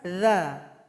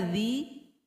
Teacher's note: huruf berikutnya huruf Dal sudah kita bahas tadi sekarang huruf dalal dalal ini berada di ujung lidah dengan ujung gigi